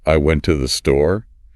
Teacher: I'd probably emphasize went and store. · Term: sentence stress